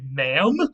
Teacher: we will drop the D. Instead of madam, we'll just say ma'am, and we'll sort of draw out that vowel a little bit because there were two vowels there originally.